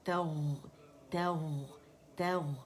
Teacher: تا باریک ہے، اور غین جو ہے یہ مخفف میں موٹا ہے، تو تغ، تغ، تغ، استغفروک، استغفروک، ٹھیک ہے.